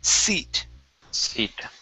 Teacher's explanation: this is seat instead of zeet. Okay, give me an unvoiced S.